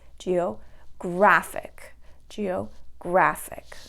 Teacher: So counting back, 1, 2, that's going to be in the middle. The graph part there, that's where you have the stress.